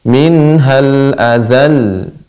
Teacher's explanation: lamnya itu dibaca dengan ditekan Ibu jadi nabr